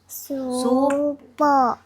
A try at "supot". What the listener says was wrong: Sabi mo yung tunog ng T. Supot.